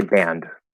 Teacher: because we're already into the n as you close it off we're going to kind of start to hear what would be like a stop d in the nose without needing to actually push that little extra out okay because